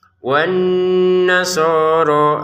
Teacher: Wan nasoro, sodnya 2 harokat, roknya juga 2 harokat.